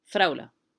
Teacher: when the arabs native speakers say kind of fast so they end up saying fraula